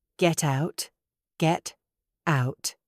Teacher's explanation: Do not link them with a D. Link them with a T.